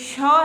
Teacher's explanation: श का उचा स्थान होता है लू मतलब इसका उच्चारण करते इसमें हवा फेफड़ों से निकलकर तालू के पास टकरा रही है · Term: उष्म व्यंजन